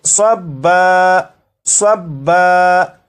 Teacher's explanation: وقف میں اسے پڑھیں گے صبا، صبا، یعنی دو زبر کو الف سے بدل کر